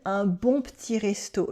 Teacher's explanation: We cut the E in petit to say it faster, of course.